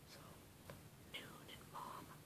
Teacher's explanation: this means that all of the air comes out of the nose, pretty much.